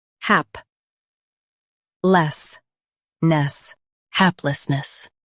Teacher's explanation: Stress hap and keep less light.